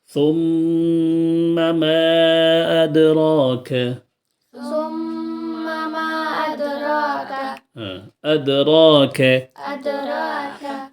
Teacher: الدين اب ادراک میں را جو ہے مفتوحہ ہے رائے مفتوحہ تو یہاں پر رائے مفتوحہ ہونے کی وجہ سے ہم را کو پر پڑھیں گے یعنی را کو موٹا پڑھیں گے